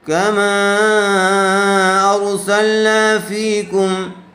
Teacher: تكونوا تعلمون كما أرسلنا فيكم كما ميم کے اوپر مد ہے یہاں مد منفصل کا قاعدہ ہوگا اس لئے اس کو تھوڑا زیادہ کھینچ کر پڑھیں گے